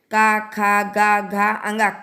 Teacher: जो का वाला है वो कंठ को यानी गले से निकल रहा है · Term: स्पर्श व्यंजन